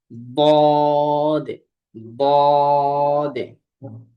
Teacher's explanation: জিহ্বার গোড়ার কিনারার উপরের মাড়ির দাঁতের গোড়ার সঙ্গে লাগিয়ে উচ্চারিত হয়